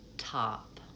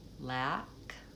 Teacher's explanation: My mouth has to be open for both but my tongue is more forward for our target vowel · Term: front vowel